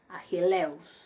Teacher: Ahí ven cómo yo pronuncio eus, pero el acento está sobre la y.